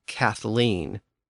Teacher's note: It was basically a combination of the TH sound and the L sound, so it came out as a THL sound.